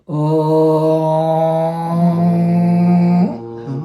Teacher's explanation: just the back of the tongue, blocking the throat. And that makes the sound go up into your nasal passages and down again.